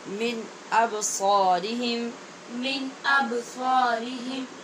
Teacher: یہاں با پہ قلقلہ ہے اور پیچھے نون پہ اظہار ہے۔